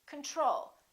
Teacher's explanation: second syllable is stressed the first o is reduced